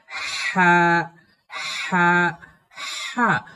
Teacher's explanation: এই লম্বা হাকে কেমন করে পড়তে হয়? এই লম্বা হাকে এই কণ্ঠনালীর মধ্য থেকে বাতাস সহ সহ করে পড়তে হয়, যেমন হা হা হা।